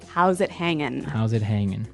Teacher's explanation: usually you don't really pronounce the G in this context cuz it's very informal